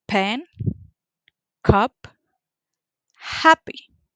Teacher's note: So let's begin with the first phoneme, which is the that one is voiceless. The point of articulation is bilabial. The manner of articulation is stop or plosive.